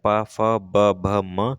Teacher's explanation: आपको पता है पा फ ब भ म आपका ओष्ठ से निकलता है, ओष्ठ से निकलता है।